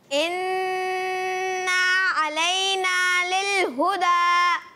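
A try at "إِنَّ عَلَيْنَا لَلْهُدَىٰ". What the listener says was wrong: गौर से देखें, इन्ना के बाद अलिफ नहीं है तो इसको हम मद्दा नहीं करेंगे, गुन्ना करेंगे एक अलिफ का, मद्दा नहीं। और अलैना, अलैना, अलई अब लल हुदा तो अच्छा हुआ, अलैना भी सही हुआ, बस इन्ना में आपने लंबा नहीं कर, इन्ना रुक जाना है, इन्ना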